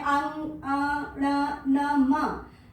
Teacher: ये पांचों जो अक्षर है अंग, ण, न, म, ये जो पांचों वर्ण है, इनका जो उच्चारण स्थान है वो कंठ, तालु, मूर्धा, दंत, ओष्ठ के साथ क्रमशः नासिका भी है। जब आप कंठ से बोलेंगे और साथ में नासिका भी होगी, इसको आप अंग को आप तालव्य से बोलेंगे लेकिन साथ में नासिका का भी प्रयोग होगा, मूर्धा से बोलेंगे ण को लेकिन साथ में नासिका भी आपकी सक्रिय हो जाएगी।